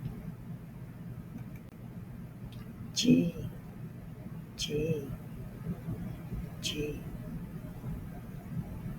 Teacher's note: The tongue is in the front of the mouth, but very little pressure, and the lips are going in a oval shape.